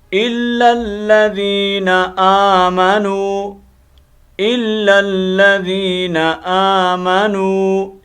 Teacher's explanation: भाई जब आमनू पढ़ते हैं तो गलत हो जाता है, ये हमज़ा को हमने एक अलिफ मुताबिक लंबा करना है, खींचना है।